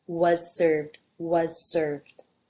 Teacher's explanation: You might actually hear the Z here simply as the S because it's followed by an S, so the Z might just get dropped.